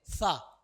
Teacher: जीभ हमारी दांत में टच हो रही है तो ये दंत सा हो गया ये कौन सा सा हो